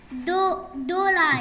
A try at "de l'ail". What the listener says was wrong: Chut, do, c'est pas do. De.